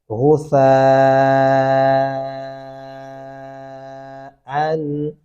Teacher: یہاں پہ آپ نے غسا سین نہیں ایڈ کرنا، سا نرمی سے ادا ہوتا ہے، دانتوں کے نیچے زبان آئے گی